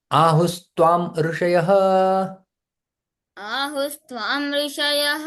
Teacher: यहाँ पर संधि होता है, विसर्ग का स में परिवर्तन हो जाता है